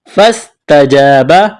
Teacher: فاستجاب فا کو سین کے ساتھ پلس کرنا ہے، سین میں سیٹی کی آواز پیدا کریں گے. تجاب تا کے اوپر زبر ہے، بغیر کھینچ کر پڑھنا ہے.